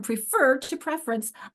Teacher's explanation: So I've gone from prefer to preference. I'm losing a syllable there. It's called syllabic regrouping.